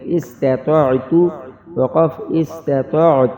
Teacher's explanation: آخر میں لمبی والی تا ہے جس کے اوپر جزم لگ کے وہ ساکن ہو جائے گی اور تا ظاہر ہوگی